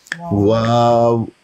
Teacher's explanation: واو ادا ہوتا ہے ہونٹوں کے گول کر کے، ہونٹوں کو گول کرتے ہیں، گول کرنے سے واو ادا ہوتا ہے واو۔